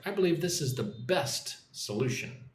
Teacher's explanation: I'm going to stop a little bit after the word best and put emphasis on the word best